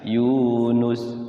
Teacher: Nus ya enggak ada wawunya ya. Jadi dia pendek langsung.